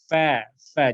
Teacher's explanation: gigi seri atas bertemu dengan punggung bibir bagian bawah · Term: huruf fa